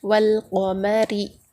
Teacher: واو سے لام کو ملا کر پڑھیں گے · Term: حروف قمری